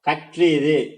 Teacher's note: இந்த ஆயுத எழுத்து வந்து தனக்குரிய அரை மாத்திரை அளவுல வந்து முழுமையா ஒலிக்காம குறைஞ்சு கால் மாத்திரை அளவுல தான் ஒலிக்கும்